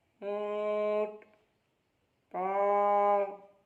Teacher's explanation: ये अनुस्वार में जिस तरह नाक में आवाज़ ले जाकर पढ़ा जाता है, या उसी तरह चंद्र बिंदु में जिस तरह पढ़ा जाता है, नाक में आवाज़ ले जाकर 1 सेकंड तक ठहरना है